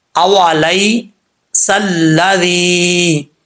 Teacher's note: ٹھیک ہے، سل سلذی، زال کا مخرج بھی آپ کو کئی دفعہ بتا چکا ہوں کہ زبان کی نوک اوپر والے دانتوں کے نچلے حصے سے لگے تو زال پڑھا جاتا ہے